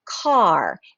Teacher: The R changes that A sound and changes the vowel sound